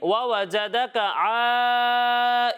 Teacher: غنہ کر کے پڑھیں گے، یعنی ناک میں آواز لے جا کر پڑھیں گے۔ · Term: اخفاء